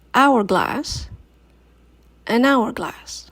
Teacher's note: Hourglass starts with the letter H, but what we hear is the sound O, O.